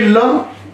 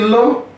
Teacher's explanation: जीभ का जो आगे वाला भाग है, ला बोलते समय ऊपर वाले दांत के पीछे छू के आता है, एकदम स्पर्श करके। देखिए बोलिए ल, देखिए तो जीभ का जो आगे वाला भाग है, ला बोलते समय दांत के पीछे एकदम जाके स्पर्श करके आता है, इसीलिए बोलते हैं पार्श्विक, स्पर्श पार्श्विक पकड़ना।